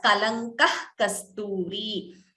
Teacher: We have jihva muliya. So instead of chanting the visarga completely, we chant it as kalankah kasturi.